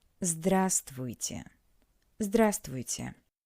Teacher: in this word we don't pronounce the letter V.